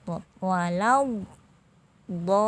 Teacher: Suara yang memanjang dari ujung dan sisi lidah hingga suara tertahan saat mengucapkan huruf dhob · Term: al-istitalah